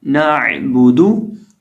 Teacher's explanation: یہ جو عین ہے اس کو ہم بیچ حلق سے ہی ادا کریں گے، اور با کا مخرج سمپل ہے دونوں ہونٹوں کو ملانے سے.